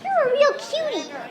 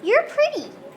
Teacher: With a flap T, the tongue very lightly and quickly touches the roof of my mouth.